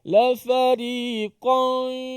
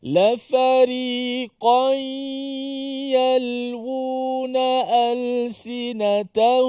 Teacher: Qan, nun itu dimasuk ke dalam ya. Dan juga dimasuk ke dalam hidung pada gunnah. Maksudnya dua-dua serentak. Bukan kita masuk hidung dulu baru masuk ya.